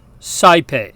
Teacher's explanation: in classical Latin, the diphthong AE makes the sound I, like the eye we see through.